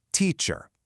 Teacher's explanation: Take a word like teacher. We've got a primary accent followed by a weak unaccented syllable